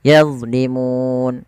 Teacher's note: Mad yang terjadi di akhir bacaan kita disebabkan karena ada sukun Arid panjangnya berapa harakat sehingga mu di sini kita boleh baca dua